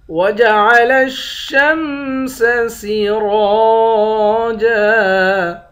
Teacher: را کو موٹا بھی پڑھیں گے، ایک الف کے مقدار کھینچ کر بھی پڑھیں گے۔ آخر میں دو زبر کی تنوین ہے، دو زبر کی تنوین میں جب وقف کرتے ہیں ایک زبر بن جاتا ہے۔